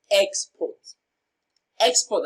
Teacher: export as a noun receives the stress on its first syllable